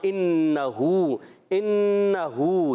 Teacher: انہو حمزہ ہے, یہ الف نہیں ہے, حمزہ کو نون سے ملائیں گے, نون مشدد, ایک الف کا غنہ ہوگا. اور یہاں انہو, انہو نون مشدد غنہ بھی, اور ہو ہا پر الٹا پیش ہے, ایک الف کھینچنا بھی ہے.